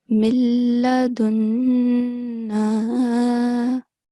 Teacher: Sustain the nasal sound, hold it for 2 seconds, and then prolong the word for 2 seconds as well.